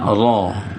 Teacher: ro itu ro berharkat satu dibaca ro berarti bunyi ro itu yang tebal